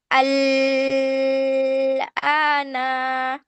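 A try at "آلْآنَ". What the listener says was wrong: টান দিলে কই চার আলিফ? কেন আল ধরে রাখতেছো কেন? মাদ টান সবসময় কিসে হয়? মাদের হরফে না? তাই এখানে মাদের হরফ কোনটা? ওটাই টান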